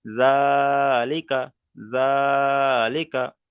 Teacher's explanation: জালের উপরে খাড়া জাবার এসেছে, খাড়া জাবার আলিফ মাদ্দার সমতুল্য, তাই খাড়া জাবারকে এক আলিফ পরিমাণ টান দিয়ে পড়তে হবে